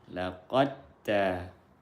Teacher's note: Pertemuan dua huruf yang satu makhraj beda sifatnya. Satu makhraj dal dengan ta, iaitu ujung lidah bertemu pangkal gigi seri atas. Dalnya sukun, taknya berharokat, maka diidghamkan huruf sukun kepada huruf yang berharokat. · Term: idgham mutajanisain